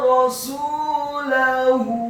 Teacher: Kata rasulahu, huruf ra-nya dibaca tafkhim fathah 1 harokat, huruf sinnya dibaca dhammah 2 harokat karena setelahnya ada wawu sukun, kemudian huruf lamnya dibaca tipis fathah 1 harokat dan huruf ha-nya dibaca tafkhim tebal dhammah 2 harokat. Karena harokat dhammahnya pada huruf ha yang tafkhim adalah harokat dhammah terbalik, artinya huruf ha yang tafkhim dan dhammahnya dibaca 2 harokat.